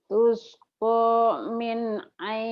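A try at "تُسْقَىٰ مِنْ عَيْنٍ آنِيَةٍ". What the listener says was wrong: Tuh masih. Tuskomin. Ulah ada jeda. Tuskomin. Jangan berhenti ya. Nyambung. Tuskomin ainin aniyah.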